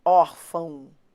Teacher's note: Isso aqui é um ditongo. Por quê? Porque eu tenho uma vogal e uma semivogal.